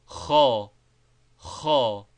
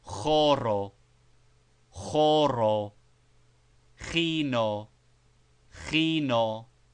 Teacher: This guttural sound is practically a very strong aspirated h, and may be made by trying to pronounce ho with the throat arranged as for saying k.